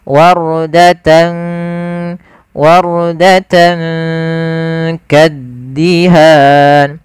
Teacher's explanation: cara membacanya kita samarkan tannya ke huruf kaf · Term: ikhfa